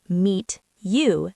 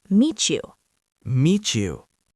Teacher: when a word ends in a T and the next word starts with a Y, they often make a ch sound